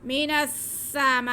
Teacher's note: الف مدہ کے بعد حمزہ ایک ہی کلمے میں تو مد متصل، اسے ہم 4 الف کے برابر کھینچ کر پڑھیں گے